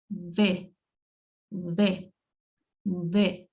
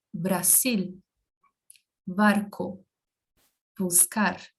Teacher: A letra B é uma mistura de B com V. Então, não é necessário comprimir os lábios desta forma, como nós fazemos em português.